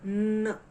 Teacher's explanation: एन एरोप्लेनचा जसा आवाज असतो नाकातून आवाज येतो तसा एन चा स्वर